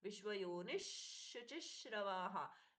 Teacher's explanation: श के पहले है विसर्ग का परिवर्तन श में हुआ